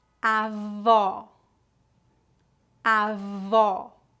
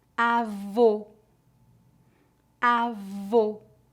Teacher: agora vamos praticar as palavras avó com o aberto e avô com o o fechado